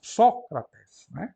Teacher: está marcado com uma braquia significa que ela é breve portanto a penúltima é breve o acento vai para trás